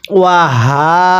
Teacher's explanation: গোল হাগুলো উচ্চারণ করার সময় গলার মধ্যে আওয়াজ দিয়ে পড়তে হয়